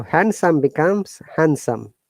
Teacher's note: one hand and some are together the d is not pronounced